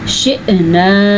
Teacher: جب حمزہ کے اوپر ساکن آ جائے تو اس طرح جھٹکے کی آواز پیدا ہوتی ہے، اور نون کے اوپر زبر ہے اور آگے الف ہے۔